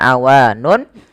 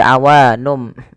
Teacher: Nun diganti dengan mim karena dia bacaan iqlab yaitu nunnya bertemu dengan huruf ba awalnya awanun menjadi awanum maka di sini m itu dianggap mati